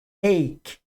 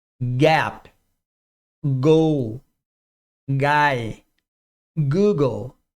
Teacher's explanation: o c ou k não é vozeado e o g é vozeado